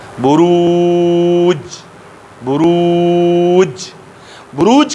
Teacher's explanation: بروج کې ګوره آواز جګ شو، فورا بند شو، باریک ادا شو · دا یې جهر، دا یې شدت، دا یې استفال، دا یې انفتاح، دا یې اسمات، دا یې قلقله. لہذا جیم مجهوره شدیده ده، انتهایی قوي او سخت حرف ده، قوي او سخت حرف ده، ځکه سا یې د جهر د وجې نه بندېږي، آواز یې د شدت د وجې نه بندېږي.